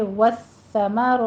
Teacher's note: سا کے اوپر تشدید ہے، سختی کے ساتھ پڑھیں گے، والثمرات سیٹی کی آواز نہیں آنی چاہیے